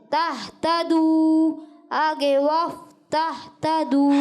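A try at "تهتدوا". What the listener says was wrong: ہا کی آواز نہیں آنی چاہیے تہتدو ہا تہتدو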